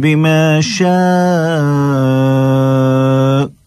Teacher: شاء کے آخر میں جھٹکا سا محسوس کیا ہوگا آپ نے, کیوں؟ اس لیے کہ آخر میں حمزہ ہے, اس کو ظاہر کرنا ہے.